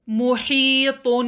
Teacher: حا کو مخرج سے نکالیں، طا کو بھاری ادا کریں